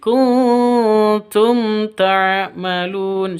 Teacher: Nun mati bertemu dengan ta, samar didengungkan, siap-siap ke huruf taknya karena ikhfa hakiki. · Mim mati bertemu dengan ta, jelas, terang, tidak boleh didengungkan